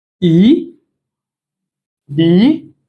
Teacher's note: this is the second tone. It goes upward. Yeah. It's also called rising tone. Rising tone because it goes upward.